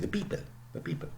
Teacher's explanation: An Indian accent, they don't aspirate in Indian English. They would say the people.